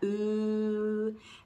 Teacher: So ooh is way up high in the back